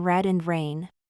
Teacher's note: in English, the sound of R is usually pronounced with less vibration. The tongue doesn't touch the roof of the mouth.